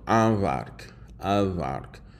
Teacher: with the nasalization on the A, and then you're just getting a straight up normal V without any nasalization